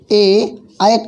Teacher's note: ऐ का उच्चारण स्थान कंठ तालु से है।